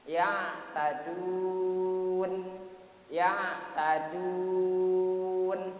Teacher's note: dibaca Mad Arid lissukun yang panjangnya enam harokat